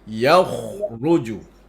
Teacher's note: Tebalkan kha tu. Angkat lagi pangkal lidah.